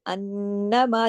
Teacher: जिधर जिधर नून पे शद आ रही है उसकी वजह से नून पे जो गुन्ना आ रहा है बड़ा गुन्ना आ रहा है